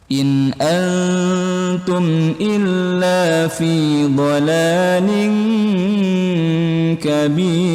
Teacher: nun sukun bertemu huruf alif, itu hukumnya idhar halqi, jelas di tenggorokan